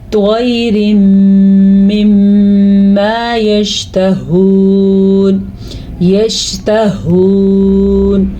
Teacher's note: ہا کو حلق کے آخری حصے سے پڑھنا ہے